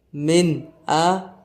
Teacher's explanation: پیارے ناظرین، یہاں پر نون ساکن کے بعد حمزہ آ رہا ہے۔ حمزہ حروف حلقی میں سے ہے تو یہاں پر اظہار ہوگا، یہاں پر غنہ نہیں کریں گے۔